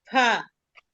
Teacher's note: নিচের ঠোঁটের পেট, সামনের উপরে, দুই দাঁত আগার সঙ্গে লাগায়া ফা